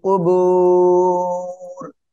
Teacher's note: অক্ফ করলে র সাকিন, আর এখানে তিন আলিফ টেনে পড়ব মাদ্দে আরজি এর জন্য